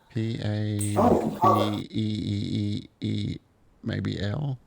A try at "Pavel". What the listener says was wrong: I think you got too many E's in there, I think. There's 2 L's, right?